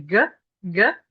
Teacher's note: So C versus G C if you put place your fingers in the middle of your neck C you shouldn't feel any vibration whatsoever. But when you say GG G you feel the vibration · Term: voiced